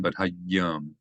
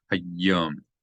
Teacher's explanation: Again, you have a dagesh in the yud. So not just hayyam, but hayyam. You hold down the yud a little bit.